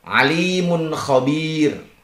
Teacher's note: anaranya Alimun khir tanwin zumah yang berjumpa dengan ko bacaannya adalah izhar kholqi dibaca jelas dan pendek tanpa mendengung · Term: izhar khalqi